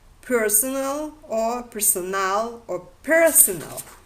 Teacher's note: the appearance of the stress on the first syllable is the result of the recessive tendency